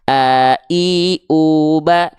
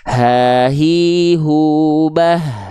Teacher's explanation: Kalau hamzah dia pita suaranya menutup sehingga tidak ada aliran nafas yang mengalir, a, i, u, ba. Sedangkan H besar dia pita suaranya membuka sehingga ada nafas yang mengalir